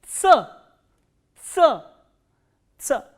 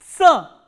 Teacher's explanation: This sound is produced when the tip of the tongue touches the lower teeth and the front part of the tongue closes the alveoli for a while.